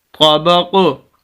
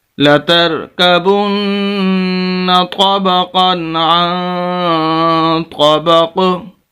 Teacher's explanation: جیسے ہی ہم ساکن کریں گے تو قلقلہ ہوگا، کیونکہ قاف حروف قلقلہ میں سے ساکن ہو جائے گا، 2 زیر ختم ہو جائیں گی۔